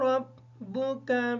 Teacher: ربک کی جو را ہے اس کو پر کر کے پڑھیں گے اس وجہ سے کہ اس کے اوپر زبر ہے۔